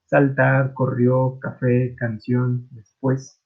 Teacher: el acento al pronunciarlas se lo damos en la última sílaba · en las agudas, la que se acentúa es la última sílaba